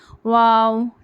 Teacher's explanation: बोलना है इसको वैसे ही पढ़ना है वाव ठीक है वाव पूरे होठ शुरू में गोल कर देना फिर वाव को पढ़ते हुए खोलना वाऊ शुरू में जैसे गोल कर रहे थे लास्ट में वही